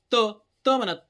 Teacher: जिभेचा आता तुम्ही म्हणू बघा त म्हणा. त म्हणलं तर आपल्या दाताच्या मागच्या भा बाजूला आपली जीभ लागते म्हणून म्हणायचं त्याला दंत्य